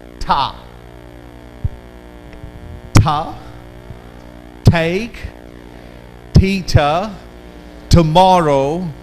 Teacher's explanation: Your tongue would not curl. The tip of the tongue would go and make contact with gums and make this sound.